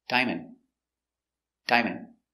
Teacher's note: a soft D at the end diamond diamond in normal conversation it'll be a stop d where the tongue goes up and stops the air